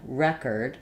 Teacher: In record, I'm using first syllable stress. My letter E is going to have the a sound like in red. Record. And notice that my second syllable changes as well.